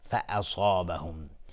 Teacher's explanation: صاد از حروف استعلا غلیظ تلفظ میشه، الف هم تابع صاد غلیظ